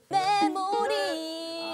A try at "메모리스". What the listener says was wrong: 틀렸어 마지막 S 있잖아요 메모리스 마지막 S 있잖아요 메모리스 얼 발음이에요. 엘 발음으로 해서. 메모 윈데 리라 그래가지고.